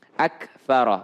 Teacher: Huruf kaf ya, kaf kalau dia sukun maka ak, ada sedikit desisnya